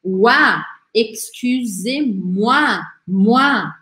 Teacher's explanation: E OI, em francês, sempre vai ter um som de UA.